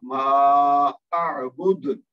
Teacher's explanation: اب یہاں دال کے اوپر ویسے تو پیش ہے, لیکن اگر ہم یہاں رکیں گے, اور ضرور رکیں گے کیونکہ یہاں آیت ہے, تو یہاں جب رکیں گے تو دال ساکن ہو جائے گی اور یہاں پہ کلکلا کبرا ہوگا